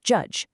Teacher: Take the voiced plosive d, add the voiced fricative j sound, and you get j, like in the word judge. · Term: affricates